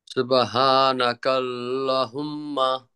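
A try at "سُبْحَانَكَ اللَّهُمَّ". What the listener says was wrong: ল টানবেন। এটা এখানে একটা খাড়া জবর আছে। এই খাড়া জবর থাকলে টানতে হয়। এই যে হার মধ্যে টানছি, খাড়া জবর আছে এই জন্য। সুবহানাকাল্লাহুম্মা।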